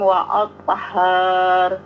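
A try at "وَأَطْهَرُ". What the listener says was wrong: Nah, jangan panjang. Wa athhar. Kalau wa athhar berarti ada alif ya.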